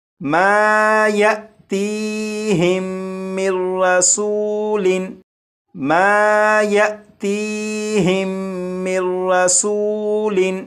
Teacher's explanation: اب یہ حمزہ ساکنہ ہے اور حمزہ ساکنہ کو ہمیشہ جھٹکا دے کر پڑھتے ہیں، تو اسے پڑھیں گے یأتیہم، یأتیہم۔ یہاں پر یہ جو نون ساکن ہے اس نون ساکن کو را میں ادغام کر دیں گے، اور یہاں پر یہ جو میم ہے میم کو را سے ملائیں گے اور یہ پڑھا جائے گا مر مر مر۔